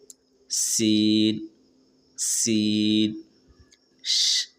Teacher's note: इसको अदा करने के लिए जबान को दांतों के पास रखकर हल्की हवा से सीन अदा होते हैं। · اس کو ادا کرنے کے لیے زبان کو دانتوں کے پاس رکھ کر ہلکی ہوا سے سین ادا ہوتے ہیں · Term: छोटी सीन, چھوٹی سین